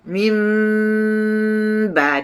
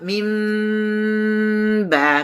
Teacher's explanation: Min ba, dengung iqlab min ba. Bibir tersentuh di antara bibir atas, bibir bawah dan terus dah di ba.